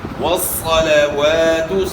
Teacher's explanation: للہ، والصلوات، والصلوات نہیں پڑھنا، یہاں بھی الف مد ہے، الف سے پہلے زبر ہے، والصلوات، یہاں واو کے اوپر جو زبر ہے اس کو تھوڑا کھینچیں گے تاکہ ساتھ الف ادا ہو۔ والصلوات، صاد کو آپ نے موٹا پڑھنا ہے، والصلوات نہیں پڑھنا، یعنی صاد کو سین سے تبدیل نہیں کرنا۔